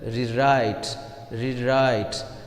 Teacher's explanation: here right is the second syllable and the stress will fall on the second syllable